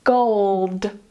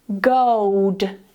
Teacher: Notice that I move my lips more when I say it with the 'w'.